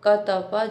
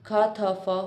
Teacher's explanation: अघोष अल्पप्राण स्पर्श क त प ध्वनियों में अघोष महाप्राण स्पर्श ख थ फ ध्वनियों में परिवर्तन हो जाता है।